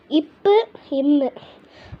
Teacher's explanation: மேலிதழ் கீழிதழ் பொருந்துவதால் ஒலிக்கிறது